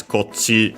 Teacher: Same rules, kochira contracted here as kochi, on its own also as kochi with the accent on the last mora, unlike the rest of the words unaccented